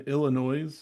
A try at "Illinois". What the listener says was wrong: Did you just put an S on Illinois? Incorrect. Illinois.